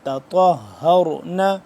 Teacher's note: تا باریک طا موٹا